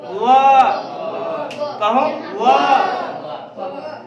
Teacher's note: वह का उच्चारण स्थान दांत और होठ दोनों है। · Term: वकारो दंत ओष्ठ